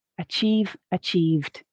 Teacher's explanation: we're not adding an extra syllable here but the base form of the verb ends in a voiced sound · the base form of the verb ends in a voiced sound, which leads us to make the d sound at the end of the past tense